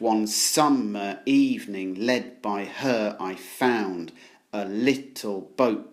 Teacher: poem Wordsworth has written it in iambic pentameter which are these ten syllable lines with five stresses with the stress falling on every other syllable